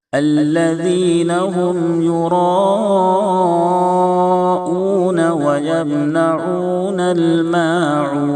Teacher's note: میم میں غنہ نہیں ہوگا کیونکہ میم ساکن کے بعد نہ با ہے نہ میم ہے · ذال کو نرمی سے پڑھیں، زا کی آواز نہ نکلے ، میم میں غنہ نہیں ہوگا کیونکہ میم ساکن کے بعد